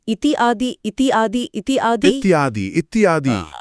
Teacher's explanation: हमारी जीभ और हमारा स्वर यंत्र अपनी ऊर्जा बचाने के लिए इन ध्वनियों को आपस में मिलाकर खुद ब खुद इत्यादि बोलने लगते हैं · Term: संधि